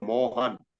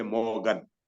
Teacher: In Tamil, H is also not there. So they cannot say Mohan, they'll say Mogan.